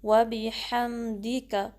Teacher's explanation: سبحانک اللہم، سبحانک اللہم، وبحمدک، وبحمدک، واو کے لیے ہونٹ کو گول کریں گے، باقی کسرہ کو شارپ رکھیں گے، ہا کو میم سے ملائیں گے، میم کو ہلانا نہیں ہے، وبحمدک، اور کسی بھی حرکت کو اسٹریچ نہیں کرنا۔